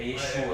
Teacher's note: aí o grego tem a sílaba tônica do Shua